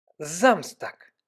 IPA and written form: ˈzamstaːk (Samstag)